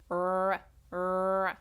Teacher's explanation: you can feel the blockage coming from the back of the tongue. R that makes it a consonant sound.